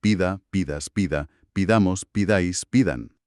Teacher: La primera gran transformación es la vocal e, que bajo presión se afila y se convierte en una i.